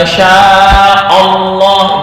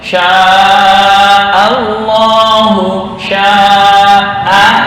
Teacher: Nah, ini hamzah bertemu dengan lam, ini tetap dibaca tarkik. Tarkiknya kelihatan, bukan tafkhim, bukan sya'allah, itu kurang pas.